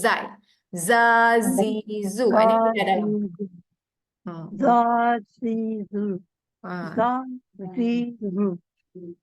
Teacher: hujung lidah pergi gusi bawah akan menghasilkan tiga sebutan Huruf huruf Z Za Zu Za Z Zu Ha jangan keluar lidah